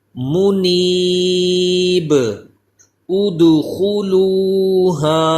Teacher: یہ با ساکن ہو جائے گا، اس کی زیر ختم ہو جائے گی